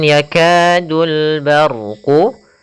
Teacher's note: lafal yakadu ada hukum tajid berupa thaii pada huruf Kaf yaitu adanya fathah bertemu dengan alif kita panjangkan untuk huruf kafnya sepanjang dua harakat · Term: mad thi'i